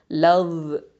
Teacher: இந்த நுனி நாக்க மேல் முன் பற்களுக்கு கீழ வச்சு சொல்லணும்